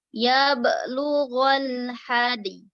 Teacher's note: Dalnya tetap dipantulkan, Bu. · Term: huruf qalqalah